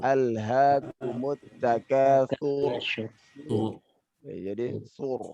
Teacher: Jadi ketebalannya itu dia mesti mempersedikit getaran ro, lalu menutup mulut.